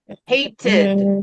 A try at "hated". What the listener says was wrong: See, now you can say it properly.